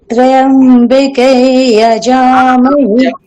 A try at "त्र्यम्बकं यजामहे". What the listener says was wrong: নয়, ত্র্যম্বকাই, অকারটা থাকতে হবে, ঠিক আছে? ত্র্যম্বকাই বলুন।